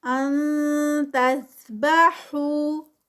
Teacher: ان پہ اخفا ہے، نون ساکنہ اور اس کے بعد حروف ہلکی نہیں ہے، اخفا آئے گا